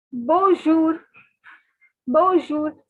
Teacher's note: the n is silent okay guys so n is silent n has a nasal sound so it is not to be pronounced